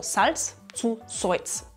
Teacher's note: In diesem Fall wird L zu Oi